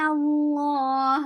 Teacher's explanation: No, no, keep noon light, but lafz jalala will be heavy, and lafz jalala will be heavy and will be 2 counts long.